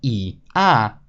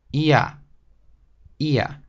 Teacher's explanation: instead of pronouncing the vowels separately, as in I, A, you make the sound stick together, as in ia, ia, ia. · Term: diphthong sounds